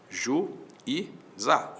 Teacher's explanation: o u para um lado o i pro outro isso é iato o z foi parar na outra sílaba então Então esse I